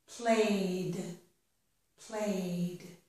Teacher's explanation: Here, this word is play. The last sound is the vowel sound A. So when I add ED, it sounds like D.